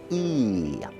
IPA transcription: i: